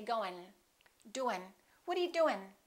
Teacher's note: the ing ending sometimes the G disappears